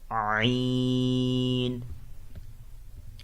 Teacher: From the middle part of the throat.